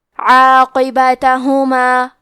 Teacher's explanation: کلمت عاقبتہما میں قاف کو موٹی آواز میں پڑھیں گے، با پہ تا پہ زبر ہے اور ہا پہ پیش ہے تو ہمیں یہ تینوں حرکات کو ظاہر کرنا ہے، عاقبتہما۔